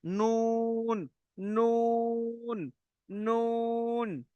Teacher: 9 নম্বর মাখরাজ হলো নুনের মাখরাজ, জিভের আগা এবং তার বরাবর উপরের তালু, দেখো নুন, দেখেন নুন, জিভের আগা, যে আগা, এই আগাটি ওর বরাবর উপরে যে তালু রয়েছে তালুর সাথে গিয়ে লাগবে নুন, নুন, নুন, দেখছেন, লাগছে। এটি হলো নুনের মাখরাজ, জিভের আগা এবং তার বরাবর উপরের তালু